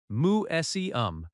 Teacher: Museum has stress on seum